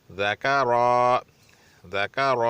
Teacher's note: ذکر، اس میں دال بھی پتلا ادا کیا جائے گا، کاف بھی پتلا ادا کیا جائے اور را کو موٹا کیا جائے گا